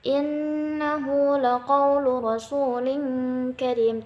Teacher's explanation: Innahu, nun bertasydid, perhatikan di situ ada gunnah.